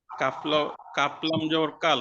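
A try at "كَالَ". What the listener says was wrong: টান দিয়ে হরফের নামটা একটু টান দিই। কাফ লাম জবর কাল। হ্যাঁ কাফও টান দিয়ে লামও টান দিয়ে।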